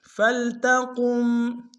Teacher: قم میں میم ساکن کے سامنے قاف کو موٹا ادا کریں گے